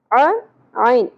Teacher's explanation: عین، ویسے حلق سے ادا ہوگا عین. ٹھیک ہے، زبر کو زیادہ نہیں کھینچنا.